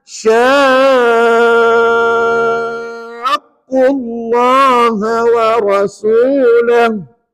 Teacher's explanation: perkataan sya itu kena wajib 6 harakat. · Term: mat lazim kalimi musaqqal